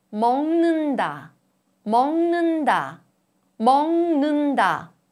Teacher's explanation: Under the influence of 느 sound, a plosive 그 changes to 응 sound.